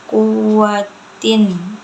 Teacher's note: mad tabi'i karena ya sukun sebelumnya harokatnya kasroh, cara bacanya panjang 2 harokat. Kuwatin, itu izhar karena tanwin bertemu dengan ain, cara bacanya jelas.